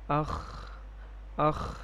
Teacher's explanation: خا کی ادائیگی میں بھی سانس جاری ہے اور آواز میں پستی ہے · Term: ہمس